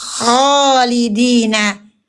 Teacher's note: Haknya huruf kha dibunyikan tebal karena dia punya isti'la. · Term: tafkhim